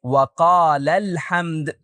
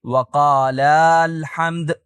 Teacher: وہ درست نہیں ہے، کیونکہ ہمیں لفظ وقال کے آخر میں موجود الف کو گرانے کی ضرورت ہے